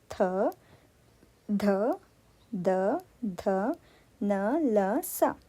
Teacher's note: ಹಲ್ಲುಗಳ ಸಹಾಯದಿಂದ ಹುಟ್ಟುವುದರಿಂದ ಈ ಅಕ್ಷರಗಳಿಗೆ ದಂತ್ಯಕ್ಷರಗಳು ಅಂತ ಹೇಳ್ತಿವಿ